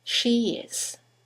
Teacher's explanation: there is a semi-vowel y that links the vowel at the end of she to the vowel at the beginning of is